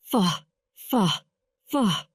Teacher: feeling the air pass through his teeth and lower lip